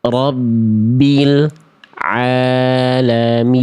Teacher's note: Ya, lamnya memang tidak memantul tapi diputus suara L-nya. Jadi kayak ada jedah hening antara lam sukun dengan ain.